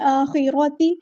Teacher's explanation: را کو بھی ہم نے پور ادا کرنا ہے، موٹا ادا کرنا ہے، تا کو باریک ادا کرنا ہے